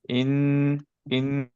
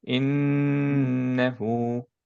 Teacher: Complete গুণনা যেহেতু আমাদের মুখটা ক্লোজ রাখবো, ওকে? পুরাটা আমরা বের করব নাক দিয়ে, নেজাল ক্যাভিটি দিয়ে।